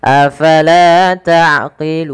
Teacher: la panjangkan 2 harakat karena ia mad tabi'i.